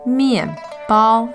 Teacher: m i a n fourth tone b a o first tone